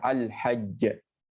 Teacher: Ini seolah-olah jimnya satu. Enggak perlu syaddah.